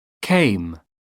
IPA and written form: keɪm (came)